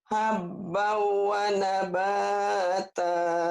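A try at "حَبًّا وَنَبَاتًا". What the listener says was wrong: Idghamnya ditahan sedikit. Habbau wa nabata. Ditahan.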